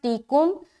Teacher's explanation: یا میں حمزہ ساکینہ کا جھٹکا